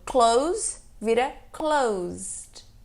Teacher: quando as suas cordas vocais estão ali vibrando é o som de D no final que vai ter